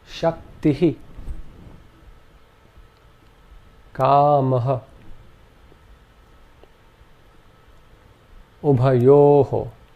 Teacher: The second ornament is called the visarga, and this is simply an aspirate, where the breath is expelled in a very short burst along with the preceding vowel sound